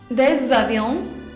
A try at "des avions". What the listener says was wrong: très bien, avec la liaison des avions,